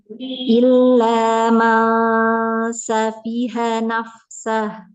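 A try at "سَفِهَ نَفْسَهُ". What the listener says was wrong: Ada Mbak itu mengalir, cuman ketahan di tengah lidah ya, ke depanan lagi aja. Jadi kayak kita mau ngucapin huruf sin.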